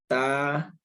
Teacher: हमारा मुंह खुला हुआ है, यानी कि फैला हुआ है, गोल नहीं हो रहा